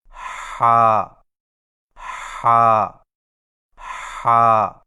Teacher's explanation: ہا کی درست آواز کی پہچان یہ ہے کہ ادائیگی کے وقت گلے میں کچھ دباؤ سا محسوس ہوگا